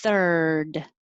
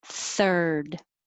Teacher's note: Think of this IR as just R, just making the noise R. You put your tongue curled back, near the front, but curled back, and you just make noise.